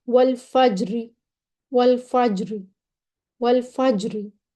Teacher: را مرامہ مکسور، یعنی زیر والی را جب روم کے ساتھ وقف کیا جائے، را پہلے ہم نے پیش والی پڑھی تھی جس کو موٹا پڑھنا تھا، لیکن اب جو ترقی کے ساتھ پڑھنی ہے وہ روم کرنا ہے، را کی آواز تھوڑی سی نکالنی ہے، باریک پڑھی جائے گی